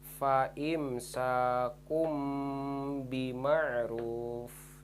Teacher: tanwin dhomah nya berubah jadi huruf mim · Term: hukum iqlab